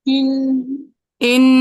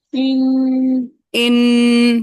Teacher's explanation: نون مشدد میم مشدد کا غنہ وقفاً بھی ختم نہیں ہوتا، نون مشدد میم مشدد کا غنہ، ختم نہیں ہوتا.